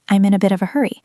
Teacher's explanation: The first few words are very fast, and then we slow down on the important information.